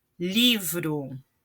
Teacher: Livro li é a sílaba tônica, então uma paroxítona.